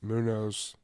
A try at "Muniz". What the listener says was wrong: I say Muniz. It's IZ. It's not OZ. It's not OZ. Munoz would be OZ. So Muniz. Muniz.